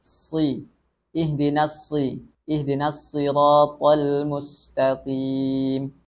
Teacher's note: Ihdinas si, shad dalam keadaan kasrah atau berharokat kasrah juga tetap dibaca tebal